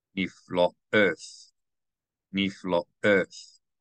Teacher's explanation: This aleph is pronounced as a glottal stop because there is a vowel that belongs to it. The holam over the top on the left belongs to the aleph, so you know to pronounce it as a glottal stop and not silent.